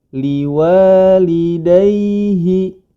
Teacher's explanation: Artinya apabila huruf waw dan huruf ya didahului, yang mana huruf waw dan ya ini sebelumnya berharokat fathah, maka dia mengeluarkan suaranya dengan lembut atau memiliki sifat al-lin. Seperti contoh, liwalidayhi, jangan sampai dihentakkan.